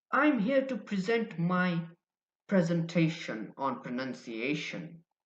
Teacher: the stress on the second syllable present makes it a verb